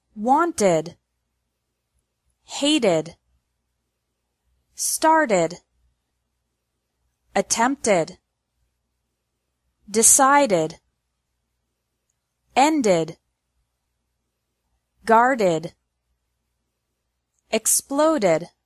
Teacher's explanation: ED is pronounced like ed with an extra syllable after verbs ending in a T or a D sound